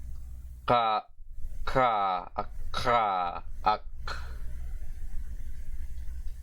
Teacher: aspirated K, which is similar to the English K more so, although still further back · the voiceless aspirated velar or velar aspirated plosive